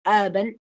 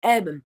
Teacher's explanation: Yo puedo hacer elision de la schwa que le seguiría a la bilabial plosive. Entonces, la nasal se va a volver el núcleo de la sílaba y ahí se va a asimilar aparte y se va a volver, o se puede volver, la bilabial nasal